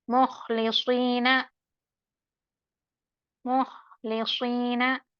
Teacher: ये हर्फ ख्वा हर्फ मुस्तालिया भी है और महमूसा, यहाँ पर ख्वा साकिन है तो हम्स की आवाज भी आनी चाहिए।